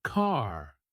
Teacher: American accent often uses a strong R sound.